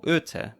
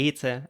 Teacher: the Low German ut or öte, meaning prissy or over nice, which was unrounded to ete